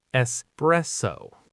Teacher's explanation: The second syllable is the strong one, the anchor of the word press.